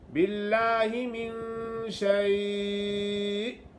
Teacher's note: اکثر لوگ پڑھ لیتے ہیں باللہ من شیء، شین یا زبر شے پڑھتے ہیں، حمزہ نہیں پڑھتے، حمزہ ساکنہ جھٹکا دیا جائے گا